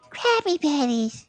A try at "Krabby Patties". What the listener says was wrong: sounded like both, does. It sounded a little bit like the P. Crappy patties. Krabby patties.